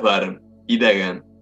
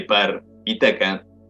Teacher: Las tres consonantes que aparecen en las palabras bar y daga son sonoras mientras que las correspondientes consonantes de par y taca son sordas.